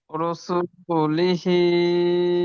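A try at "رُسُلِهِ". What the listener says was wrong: মাশাআল্লাহ, ভালো বলেছেন।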